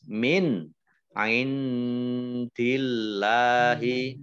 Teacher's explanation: Nun sukun bertemu dengan huruf ain, idhar, dibaca jelas, min, ain dillahi.